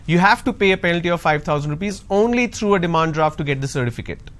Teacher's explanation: Now, the word only is taking the stress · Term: sentence stress